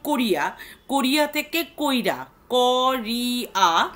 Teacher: হর্ষৈকার এবং হর্ষৌকার যেখানে উচ্চারিত হওয়ার কথা সেখানে উচ্চারিত না হয়ে যদি আগে উচ্চারিত হয় তখন আমরা তাকে অপিনিহিতি বলি।